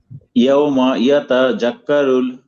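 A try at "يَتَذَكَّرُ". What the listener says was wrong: হ্যাঁ এই যে আপনারটা ঠিক আছে, সুন্দর হয়েছে, শুধু জালটাকে যা যা বলে ফেলছেন, এটা একটু নরম করতে হবে ভাই। জিপার আগে একটু কামড় দেন, আমার জিপে দেখা যায়, দেখেন এই জিপে দেখা যাবে এরকম, রাক্কারুল, রাক্কারুল,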